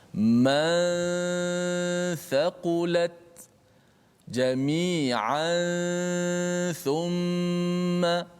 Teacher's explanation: Panjangkan suara gunah tersebut. Itu adalah hukum ikhfa hakiki, contoh pada huruf tha.